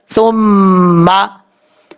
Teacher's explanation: میم کے اوپر شاد آ جائے تو غنہ کیا جاتا ہے، یہاں پہ ایک الف کی مقدار غنہ کر کے پڑھیں گے